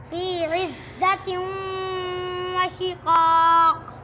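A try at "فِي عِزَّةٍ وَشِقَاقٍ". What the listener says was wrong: शिकाक काफ कलकला आ रहा है, दो काफ दोनों मोटे हैं। बेटा नून साकिन और नून तरमीन कब गुन्ना होते हैं? फिर यहाँ आ रहा है तो फिर आपने गुन्ना क्यों नहीं किया?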